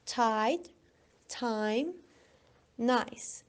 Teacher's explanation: I. We start with a, that is a vowel that is very open and the tongue is front, and is finished with e, that is close mid, and the tongue is front.